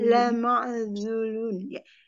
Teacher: Lama ainya dialirkan sedikit, dia punya sifat tawasut.